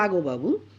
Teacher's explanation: ন টা অনেক সময় ল তে পরিণত হয় ঠিক আছে নাগো বাবু সেটাকে অনেক সময় বলা হয় লাগোবাবু এটাও